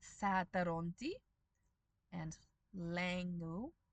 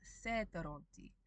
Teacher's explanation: if that a sound, the a with the umlaut, is in an unstressed syllable, in Reef, we can, optionally, turn it into the e sound from the e.